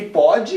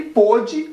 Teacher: se pronuncia pode, o O aberto. E o pôde se pronuncia o O fechado. Só que é colocado esse acento diferencial no O para que você não pronuncie pôde.